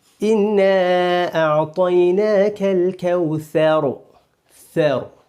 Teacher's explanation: طرف لسان یعنی زبان کی نوک جہاں سے زبان شروع ہوتی ہے، زبان کا سرہ. طرف لسان یعنی زبان کی نوک جب ثنایا علیا اور ثنایا سفلا، یعنی ثنایا علیا اوپر کے دو دانت، ثنایا سفلا اسی کے نیچے کے دو دانت، یعنی ثنایا علیا اور ثنایا سفلا کے کناروں سے ملے تو ث ادا ہوتا ہے. کنارے یعنی جہاں پر یہ ہمارے دانتوں کے کنارے ہیں، ان کے بیچ میں زبان کی نوک آنے سے ث ادا ہوتا ہے.